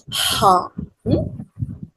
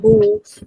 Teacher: the air passes without any constriction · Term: voiceless